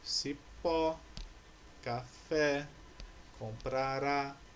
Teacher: Todas essas palavras possuem a última sílaba como sílaba tônica. Então, essas palavras são palavras oxítonas.